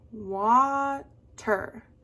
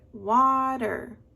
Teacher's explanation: What part of the word does your voice go up? Close your eyes and think about it. Water. The first syllable, right? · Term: accent